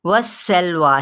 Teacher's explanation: सीन की सीटी को वाज़े करें, लाम से मिलाएं और यहाँ पर अलिफ मद्दा का कायम मुकाम है।